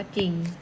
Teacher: ไม่ออกเสียงรเรือออกเสียงเป็นจอจาน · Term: อักษรควบไม่แท้